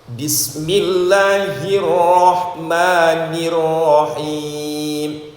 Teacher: Takrir itu ujung lidah bergetar dua kali ya. ujung lidah bergetar dua kali itu namanya takrir tapi kalau bertasdid bergetar empat kali tapi disamarkan